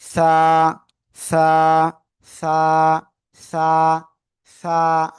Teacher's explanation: জিহ্বার আগা সামনের উপরে 2 দাঁতের আগার সাথে লাগিয়ে হালকা বাতাস বের করবেন। বাতাসটা বের করার পরে নরম করে উচ্চারণ করতে হবে, একেবার নরম করে।